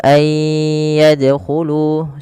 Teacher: Maka cara membacanya sebagaimana ayudkaro yaitu masukkan nunnya kepada huruf ya dan bunyi nunnya hilang kemudian terdengar hanya bunyi yanya